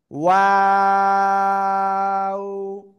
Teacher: শুরুতে গোল হবে, মাঝখানে আবার দুই দিকে চলে যাবে, আবার শেষে এসে গোল হবে, এভাবে উচ্চারণ করতে হবে।